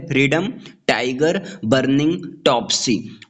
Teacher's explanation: Trochee stressed syllable और unstressed syllable से बना होता है। इसका एग्जाम्पल है फ्रीडम, टाइगर, बर्निंग, टॉपसी।